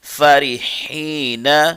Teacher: را کو باریک پڑھیں گے اور ہا کو اس کے مخرج سے ادا کرنے کی کوشش کریں گے